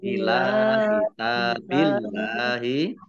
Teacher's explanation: Allahnya dibaca tipis karena harakat di depan di depannya kasrah